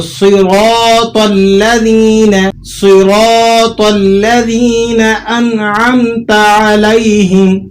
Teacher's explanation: را کو بھی آپ نے موٹا کر کے پڑھنا ہے، یہاں پر ہیوی ویٹ ہے را، اور تو بھی حروف مستعلیہ کا آ گیا.